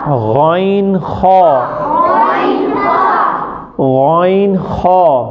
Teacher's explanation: جو گلے کی جڑ سے ادا ہوتا ہے وہ ہے غائن خا